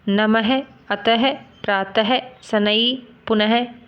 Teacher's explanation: इसका प्रयोग व्यंजन के बाद किया जाता है और इसका निशान ऐसे 2 डॉट डॉट होते हैं, इसमें से है का साउंड निकलता है। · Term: विसर्ग